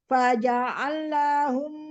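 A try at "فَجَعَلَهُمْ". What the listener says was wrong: Nah, jangan faja'al. Kurang dibuka fathahnya. Faja'alahum.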